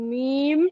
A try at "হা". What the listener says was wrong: মিম হবে না এখানে। হ্যাঁ, এই অক্ষরটি হা, আর এই যেটি বাদ দিলাম এই অক্ষরটি মিম।